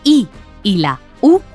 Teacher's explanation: la i y la u son vocales cerradas porque para pronunciarlas cerramos la boca